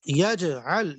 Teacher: جیم میں قلقلہ ہو رہا ہے، اس کو ہلا کر پڑھیں گے، جیم کو اس کے مخرج میں ہلا کر پڑھیں گے